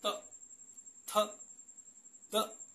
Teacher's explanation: तो त वर्ग का जो हम उच्चारण करते हैं वो दंत से करते हैं, यानी जिस समय हम इनका उच्चारण करेंगे तो हमारी जीभ जो है वो दांतों से टकराएगी